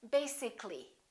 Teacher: If we add A-L-L-Y, we don't say basically. This A disappears. So the A is not pronounced, and we say basically. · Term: syllable disappears